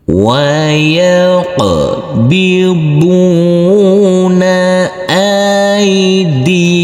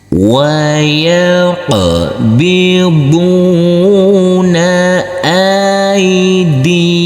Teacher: di sini ada bacaan lin, harus kita lembutkan karena huruf alif yang berfathah a ini bertemu dengan huruf ya sukun.